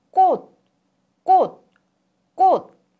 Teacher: when 꽃, 꽃, 꽃, flower, is pronounced in isolation, the final consonant ch is pronounced as t